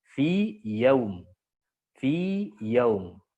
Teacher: ya di sini dia makhrajnya bukan dari pangkal lisan, tapi dia makhrajnya dari al-jauf, karena dia fi-nya, iya-nya ya madiyah.